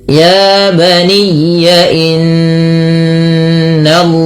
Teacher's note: Pada lafal inna di sini ada bacaan gunnah yang dimana suara nya ditahan 2 harakat, tidak hanya sekedar inna tapi ditahan bunyi nya.